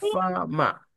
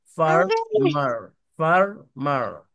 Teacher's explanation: উচ্চারণে তারা ফামা এরকম উচ্চারণ করে আর আমেরিকানদের উচ্চারণ ফারমার ফারমার আর থাকে কিন্তু আর টা একদমই কম উচ্চারিত হয়